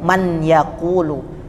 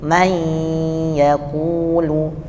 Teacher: nun sukun bertemu ya bacanya bukan an tapi langsung ke ya